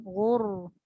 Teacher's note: dia tebal tapi dia tak ada bunyi qalqalah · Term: Ghain